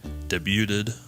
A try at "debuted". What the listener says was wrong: I really like the way you say debuted. You add some syllables.